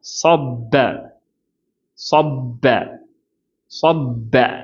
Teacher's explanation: சாதுக்கு heavy சா, நாவை உயர்த்திக்கணும். ப அப்படின்னு சொல்லும்போது லைட் படுத்திக்கணும்.